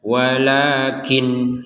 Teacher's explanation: Kalau nggak kuat nafas berhenti di walakin, bacanya walakin. Nun sukunnya dibaca dengan jelas.